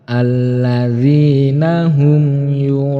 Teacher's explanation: Kemudian mim sukun bertemu dengan ya, hukum bacaannya idhar syafawi, harus jelas dan tidak boleh mendengung